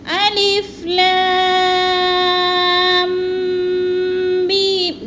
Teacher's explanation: جب میم کے اوپر آواز جانی ہے تو غنہ کرنا ہے، ناک میں آواز لے کر جانی ہے۔